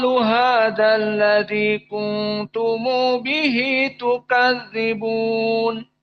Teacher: Apa itu silatul mim aljama Hum dibaca humu kuntum dibaca kuntumu